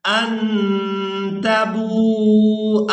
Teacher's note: اور یہاں پر آپ لوگ حمزہ دیکھ رہے ہیں، اس حمزہ کو ہم نے بغیر کھینچے اور بغیر جھٹکے کے ادا کرنا ہے۔